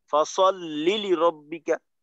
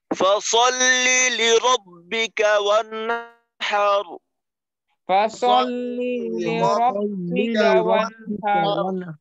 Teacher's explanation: ফাসাল্লি বলার পরে পরে লিরব্বিকাটা যেন আলাদা শব্দের লাম এটা বোঝা যায়